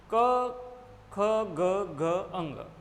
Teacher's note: अब देखिए इसका परीक्षण करने का तरीका है कि अगर हम इसको तरीके से इसका परीक्षण करें तो हम पता कर लेंगे कि हाँ भाई ये कंठ से उच्चारित हो रहे हैं, कंठ में अवरोध आ रहा है, फिर ये उच्चारित हो रहा है। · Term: स्पर्श व्यंजन